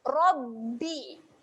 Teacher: Ada tanda sabdu, tahan pada huruf ba, rapatkan bibir.